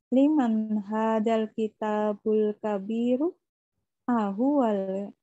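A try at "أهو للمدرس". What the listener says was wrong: Bukan ahwal. Ahwa lil. Jadi ini bukan alif lam. Ahwa li dan al mudarrisi. Jadi disambung lil mudarrisi. Ahwa lil mudarrisi.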